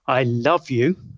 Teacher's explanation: I can have the normal falling pitch contour, a statement or a declaration